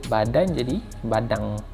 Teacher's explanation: dia bunyi bukan sengau, bunyi dengung kat belakang tu, bunyi dengung NG kat belakang